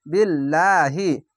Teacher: যদি নিচে জের থাকে বা যে কোন জিনিস থাকলেই আল্লাহ লেখাটি পাতলা করে হবে